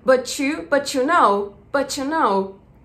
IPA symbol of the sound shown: tʃ